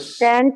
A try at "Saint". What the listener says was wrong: You pronounce it as saint. Saint. Okay. Saint. That's correct.